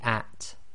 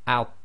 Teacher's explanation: the at, which is light, i.e. tarqiq, and out, which is heavy, so it's tafkhim plus it's qalqala, so it's got an echo as well. So we have out, yeah, so that also echoes and it's heavy.